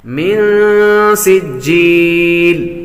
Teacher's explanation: من پر غنہ کریں گے، نون ساکن کے بعد سین